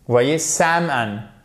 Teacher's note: Vous n'avez pas le L qui est prononcé. Vous le voyez à l'écrit, mais il ne se prononce pas.